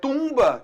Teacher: Tumba, eu tenho nasalização do U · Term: vogal nasal